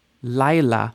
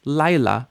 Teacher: two syllables because we have two vowels Lila now you notice you don't really hear the yod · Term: yud is sort of mushing